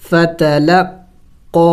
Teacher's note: قاف کے اوپر کڑی زبر ہے اور مد بھی ہے چھوٹا، تو اس کو تھوڑا سا زیادہ لمبا کریں گے، کھینچیں گے.